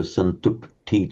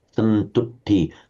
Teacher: The u is short, but the syllable is heavy because it's got a doubled consonant. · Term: heavy syllable